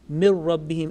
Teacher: And here assimilation, merging, blending will take place, and noon will drop. There will be no nasal sound.